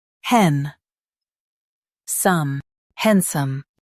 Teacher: Stress hen and soften some.